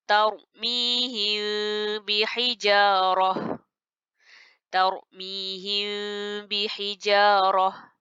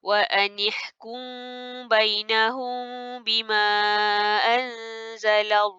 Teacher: Jadi sebenarnya apa yang kita nak lakukan pada mim sakinah yang bertemu dengan ba berbaris, kita sembunyikan bunyi mim ke dalam ba beserta dengung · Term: ikhfa